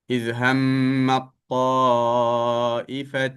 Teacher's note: ayat ni ada huruf ta bertemu dengan huruf ta. Okey. Dalam bacaan kita, dalam riwayat Hafiz an Asim, maka sebutan huruf ta dimasukkan secara sempurna ke dalam huruf ta.